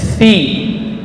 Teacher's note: Huruf fa itu di ayat yang terakhir huruf hamas dan rakhawah. Perut bibir bawah bagian dalam, ya, menempel pada ujung gigi seri atas. Fi, ya, panjang 2 harakat, bukan pi, ya.